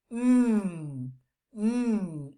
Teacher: touch your nose you're gonna feel the vibration right here or you're going to feel a little bit that the air is being released through your nose